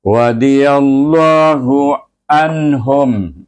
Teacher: baca dengan tebal lam jalalah itu dan dibaca Dua harakat